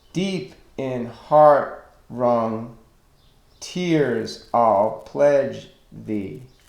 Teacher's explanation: Stress, unstressed, stress, unstressed, stress, unstressed, stress.